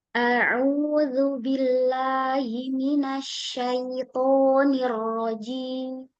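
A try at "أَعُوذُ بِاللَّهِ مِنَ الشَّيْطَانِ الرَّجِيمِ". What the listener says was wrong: Billahnya turunin, Bun.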